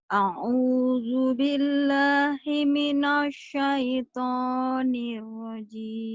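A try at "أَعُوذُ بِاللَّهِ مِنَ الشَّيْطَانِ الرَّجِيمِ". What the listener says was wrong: jangan himinos, himinos, mulutnya jangan dimonyongin. Himinas. Ya, dibuka lebar ya. tapi sinnya belum keluar tuh. Himinas.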